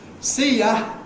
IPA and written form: ˈsiː jə (See you)